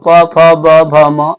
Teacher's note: प वर्ग रख दिए तो प, फ, ब, भ, म ये सब का उच्चारण आपको ओठ से हो गया